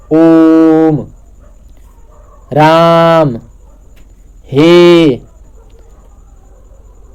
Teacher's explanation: जैसे आप लोग देखे भी होंगे, ओम, ओम, यानी कि जब हम लोग ओम बोलते हैं तो ओ को 3 बार तक, यानी कि ह्रस्व स्वर से 3 गुना समय लेते हैं। ओम, राम, हे, ठीक है। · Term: प्लुत स्वर